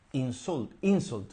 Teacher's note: the Stress is on the first syllable · con la fuerza de la pronunciación en la primera sílaba